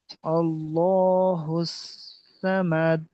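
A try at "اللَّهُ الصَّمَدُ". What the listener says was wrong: আবার সামাদ বলছেন সমাদ সমাদ মুখটা গোল করেন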